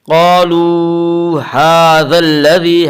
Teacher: قالو ھذا الذی، ہا کے اوپر کھڑا زبر ہے، کھڑا زبر کو ایک الف کے برابر کھینچ کر پڑھیں گے۔